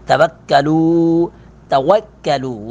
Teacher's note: لو پر مد منفصل ہے، دو الف کے برابر اس کو کھینچیں گے